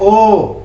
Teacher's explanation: इसका उच्चारण करने में जब भी हम बोलते हैं ओ, तो कंठ और ओष्ठ दोनों का ही प्रयोग किया जाता है, इसीलिए इसको कंठोष्ठ कहते हैं।